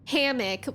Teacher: I say hammock with the stress on the first syllable